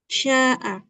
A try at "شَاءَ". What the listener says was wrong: Kok Ismam? Mana ada? Mana ada Ismam di huruf Shin? Ini namanya apa? Imalah.